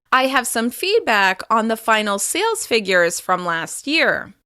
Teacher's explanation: there's a slight pause after the words feedback and figures. You can also hear a slight rise in pitch after the most important word in that chunk. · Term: thought groups